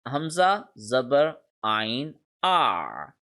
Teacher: the sound of the letter ain is always produced from the center of the throat, where you can feel your jugular vein